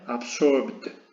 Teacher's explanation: si nos agarramos la garganta a la hora de pronunciarlo, sí vibran las cuerdas vocales